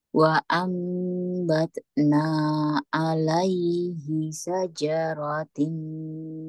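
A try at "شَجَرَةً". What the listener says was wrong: Syajarata. Apa? Syajarata ke atas. Fathah ta ini.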